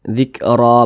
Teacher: Jadi dibaca ro, jangan dibaca ron tapi ro. Nah, ini kalau kita berwakaf tepat di huruf ro ini dibaca panjang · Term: mad iwad